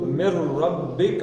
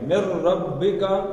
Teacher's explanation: اب نون نہیں پڑھنا، رے پڑھنا ہے، یرملون کا قاعدہ ہے، نون ساکن کے بعد رے آ گیا